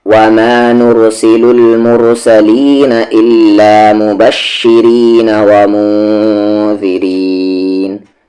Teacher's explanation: یہاں دونوں جگہ را کو ہم لائٹ پڑھیں گے یعنی کہ پتلی آواز سے پڑھیں گے کیونکہ اس کی ساؤنڈ نیچے جا رہی ہے.